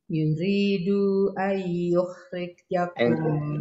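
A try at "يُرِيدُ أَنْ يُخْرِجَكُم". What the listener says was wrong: Dipendekkan yuridu ay.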